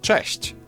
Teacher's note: Polish ch is a bit harsher than its English counterpart, but there's also a comparable softer sound